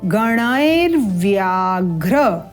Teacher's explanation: यहां पर हम त्रुटि क्या करते हैं कि ये जो व है इसको उच्चारण करना भूल जाते हैं या उच्चारण नहीं कर पाते सम्यक रूप से